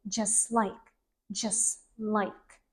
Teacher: Yeah, there is no T. T disappears. This is called elision.